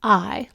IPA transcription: aɪ